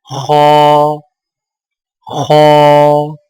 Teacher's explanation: خو کی ادائیگی میں زبان کی جڑ کو تالو کی طرف بلند کرتے ہوئے موٹی آواز میں پڑھیں